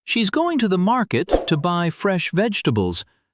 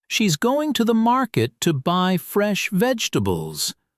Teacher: The stressed words are going, market, buy fresh vegetables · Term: correct stress